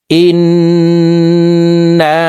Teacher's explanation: তো হরকতের বামে নুনের উপরে তাসদিদ আছে, এই কারণে জেরওয়ালা হামজাটি তাসদিদওয়ালা নুনের সাথে গুন্নাহ করে পড়তে হবে। নাকের বাসি থেকে 3 সেকেন্ড পরিমাণ গুন্নাহ করে পড়ব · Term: ওয়াজিব গুন্নাহ